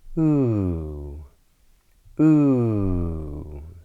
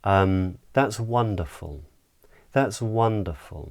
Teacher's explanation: A falling or downward intonation pattern would simply mean that the pitch of the voice drops down. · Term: downward inflection